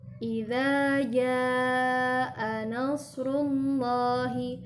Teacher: ketika membaca jim di surat An-Nasr ayat pertama ini harus lebih panjang dari huruf za yang sebelumnya.